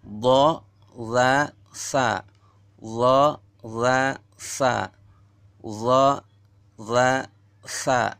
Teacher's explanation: keluar dari ujung lidah serta menepati ujung gigi 2 di bawah